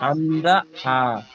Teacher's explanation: কণ্ঠনালীর শুরু থেকে উচ্চারিত হয় হামজা হা